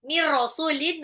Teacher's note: nun sukun ketemu ro langsung lebur aja, idgham bila guna